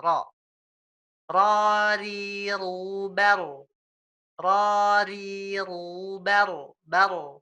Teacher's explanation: Karena memang huruf Arab itu orangnya nggak ada yang ro-nya beda sama kita, gitu, nggak bergetar banyak. Bergetar hanya satu dan 2 lah, takrir namanya. Ya, ro, seperti itu, ro, seperti ini, ya, ro.